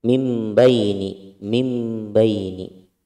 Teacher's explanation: Di sini ada nun sukun bertemu dengan ba. Hukumnya adalah iqlab, dibalik.